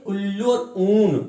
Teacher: ऊ कहते हैं तो हमारे होंठ आपस में स्पर्श होते हैं, इसलिए से ओष्ठ्य कहते हैं।